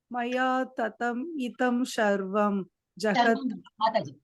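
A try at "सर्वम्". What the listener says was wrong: மாதாஜி சர்வம் சர்வம் சர்வம் இல்ல, ஷ கிடையாது, சாம்பார் சொல்லுவோமே, சாம்பார் சொல்லுவோம், சார் வருது இல்லையா வாயில, அதுதான் அந்த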